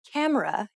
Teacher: when you say camera in English you put stress on Ka and say it for longer than the other syllables of the word camera